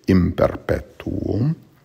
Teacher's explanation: the N before a P would be pronounced like an M, so it's imperpetuum, not in perpetuum, it's imperpetuum.